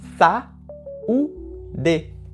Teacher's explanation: Veja que o a e o u estão em sílabas diferentes